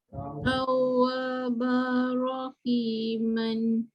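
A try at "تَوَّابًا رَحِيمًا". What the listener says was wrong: Masukkan betul-betul bunyi ra tu. Tawabar rahiman. Bar terus dia. Jadi sabdu tu sangat membantu ya. Jangan baca ban, jangan baca ba panjang, tidak. Okey, dibaca bar jelas pada bunyi ra.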